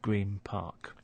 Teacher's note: the n sound at the end of green starts to sound like a m